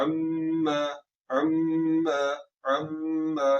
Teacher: और दूसरा ये आ गया अम्मा, यहाँ पर क्या हुआ, अम्मा, अम्मा, मीम शदद आ गया, आवाज को नाक में ले जाकर थोड़ा सा लंबा किया फिर छोड़ दिया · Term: गुन्ना